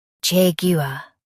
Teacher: In U.S., stress jag and say var clearly. In UK, stress jag and say u softly.